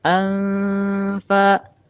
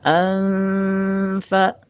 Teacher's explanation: Anfa, anfa, anfa, bukan anfa tetapi anfa. Seperti ang tapi tidak mutlak ang. Antara an dengan fa disamarkan. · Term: ikfa